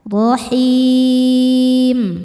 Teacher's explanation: Mad tabi'inya ya sukun sebelumnya baris kasrah, kemudian huruf yang disukunkannya adalah huruf mim. Maka haknya panjang, boleh 2 atau 4 atau 6 harokat asal konsisten dalam sekali baca. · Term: mad arid li sukun